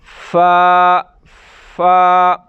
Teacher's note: سامنے والے اوپر والے جو دانت ہیں اس کی نوک جو ہے وہ اندر والا جو ہونٹ ہے، اندر والا نیچے والا حصہ، ہونٹوں کا نیچے والا جو حصہ ہے اندر کی طرف وہاں لگائیں گے، فا ادا ہوگا۔